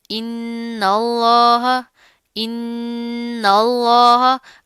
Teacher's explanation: نون کے اوپر تشدید آ رہی ہے، غنہ کریں گے، جما کر مضبوطی سے پڑھیں گے، پیچھے والا جو حمزہ ہے اس نون کے ساتھ مل جائے گا، ٹھیک ہے؟